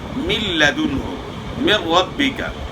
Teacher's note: اب من لدنہ نون ساکن کے بعد لام آ گیا ہے، یہاں ادغام ہوا لیکن بلا غنہ ہوا